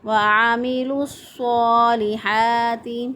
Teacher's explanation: عین کو وسط حلق سے ادا کریں گے، گلے کے درمیان سے عین کو ادا کیا